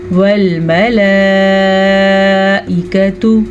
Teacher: مد کو یہ بڑی مد کہلائی جاتی ہے، اس کی مقدار 4 سے 5 سیکنڈ تک ہے